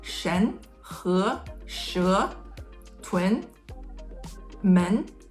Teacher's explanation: tone two is relatively correct it basically it starts low and goes high from the bottom to the highest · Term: tone 2